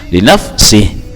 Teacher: kalimat sih ini jangan sampai dibaca memanjang